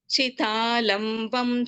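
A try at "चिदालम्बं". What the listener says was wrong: There is no Mahaprana there.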